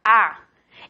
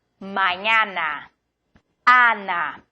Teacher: la A en español siempre abierta